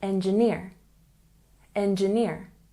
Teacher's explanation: We have a subtle stress on the first syllable, and the main stress is on the last syllable.